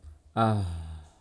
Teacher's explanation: Kemudian huruf H dalam keadaan sukun, suaranya mengalir.